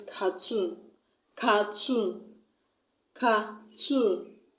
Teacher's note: You put the stress on the last syllable because the word ends with O-O-N.